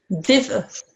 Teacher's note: there's a slight jerk at the end because the hamza is a sakin